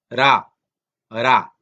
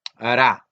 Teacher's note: Esto es lo que llamamos una vibrante lateral. Es como una mitad L, mitad R. La manera más fácil de tratar de pronunciarla es colocar la boca para decir L, es decir, la, pero en lugar de decir la, usted pronuncia una R, ¿sí?